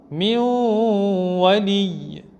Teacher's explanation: Après un noun sakin, il y a un waw. On va faire le idgham du noun dans le waw